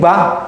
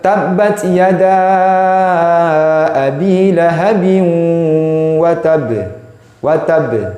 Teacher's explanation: Yang bergerak hanya bibir saja ketika qalqalah pada huruf ba.